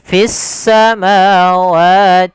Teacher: fissa langsung dihurufkan ke huruf sin karena di sini ada alif lam, yaitu alif lam syamsiyah